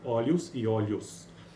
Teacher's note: Glide é semivogal, então uma semivogal anterior mais vogal, que abreviamos por GV ou SV, né? E tendo por último segmento uma fricativa simbilante desvozeada, S ou Sh, dependendo do dialeto